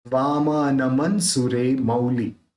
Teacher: म के साथ जो न है उसको म बोलने के साथ तुरंत उसको जोड़ के बोलना है